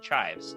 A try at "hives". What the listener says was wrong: you put on the under potato. No C. Hives.